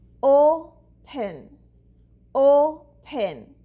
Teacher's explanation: I'm saying the first one clearly. It means that this is the stressed syllable. Here the vowel is saying its complete sound.